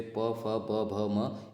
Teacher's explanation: प, फ, ब, भ, म ये सभी जो है ओष्ठ से बोले जाते हैं।